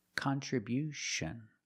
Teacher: at the end with t io n you hear the sound sh like she and shu